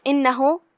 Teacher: کلمت انہو، یہاں الف کے نیچے زیر ہے، ہم حمزہ کو نیچے سے پڑھیں گے جو کہ حمزہ کی ادائیگی حلق کے نیچے والے حصے سے ہے، لہذا حمزہ کو وہیں سے پڑھنا ہے۔ پھر نون پہ تشدید ہے، 2 حرف کے برابر ہم نون کو پڑھیں گے۔